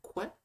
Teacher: Avec, sûrement pour cette dernière, des variations donc, entre une labiale, donc quoi, prononcer du coup le que, mais avec les lèvres en même temps